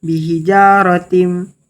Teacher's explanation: bihijaratim mad thobi'i pada huruf alif dibaca dua harakat